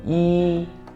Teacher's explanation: first tone. Sounds very tedious, very flat.